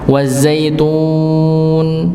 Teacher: Maka pembacaan wazaitun itu ditarik nggih lebih baik, bukan dipotong masuk ke nunnya.